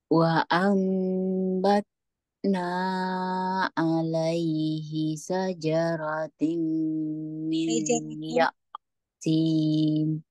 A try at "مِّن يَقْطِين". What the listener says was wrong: Coba dilihat lagi harokat-harokatnya, jangan sampai tertukar. Terus, nah itu panjangnya dua harokat saja, tidak usah panjang-panjang.